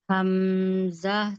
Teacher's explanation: Hamzah dari tengah tenggorokan paling bawah atau aqsal halqi. Iya, Hamzah itu tenggorokan bagian bawah ya, aqsal ya.